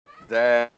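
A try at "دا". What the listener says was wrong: Elongated. Alif Fata. Whenever you see fatha before alif, then this is not simple alif, it is alif madda, and you will elongate it.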